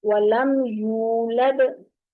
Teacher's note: योलद नहीं बोलना, यूलद गोल करेंगे बाकायदा।